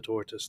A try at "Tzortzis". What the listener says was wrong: But you keep saying tortoise. Tzortzis. Tzortzis. I was thinking maybe you can't pronounce that sound, but Germans have that sound.